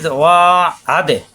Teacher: দাল সাকিন কলকল হবে, আসাব দিয়ে দালে ধাক্কা, আদে না একালিপ টান, মু একালিপ টান, জবর বামে খালি আলিফ একালিপ টান, মু পেশার বামে সাকিন একালিপ টান।